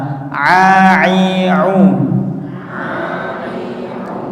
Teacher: Pada huruf ain itu katupnya ya, lisanul mizmarnya itu disempitkan ke bagian sini.